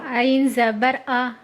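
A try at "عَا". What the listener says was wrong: نہیں آ نہیں، حمزہ بن رہا ہے. عین زبر آ.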